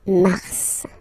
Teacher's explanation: in a way it's an exception because normally final S is not pronounced in French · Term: pronounce the final S